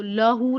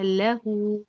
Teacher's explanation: لہو، لہو میں اور لاہو میں فرق ہے، تو لاہو نہیں بولنا ہے آپ نے، بولا لہو، باریک بولنا ہے، لام اسمائلی فیس کے ساتھ